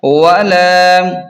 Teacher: لام کو ایک الف کے برابر کھینچیں